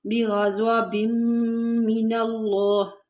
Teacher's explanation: अब यहाँ पर इदगाम मालून ना हो रहा है, तनवीन के बाद हरूफ यह मालून के 6 हरूफ में से मीम है, तो यहाँ पर हम इसको इसमें मुद्गम भी करेंगे बा को मीम में, और थोड़ा सा गुना भी करेंगे।